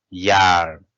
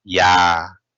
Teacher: Just lengthen without pronounce the ra.